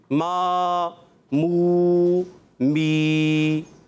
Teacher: آخر میں حمزہ ساکنہ بھی نہیں آئے گا